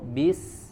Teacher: keluarnya itu dari ujung lidah ditempelkan ke Pangkal gigi seri bagian bawah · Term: huruf Sin